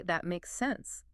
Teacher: The stress is on sense. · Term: the melody